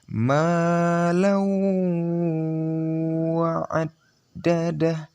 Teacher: Mendengungnya di wawnya, di huruf idghamnya. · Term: idgham bihunna